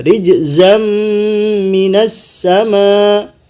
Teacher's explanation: Di sini terdapat tanwin ketemu mim, ditahan rijzam 2,5 harokat.